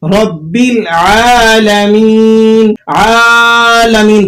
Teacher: عین پر چونکہ کھڑا زبر ہے تو اس کو 2 حرفوں کے برابر آپ نے کھینچ کر ادا کرنا ہے، رب العالمین، عالمین۔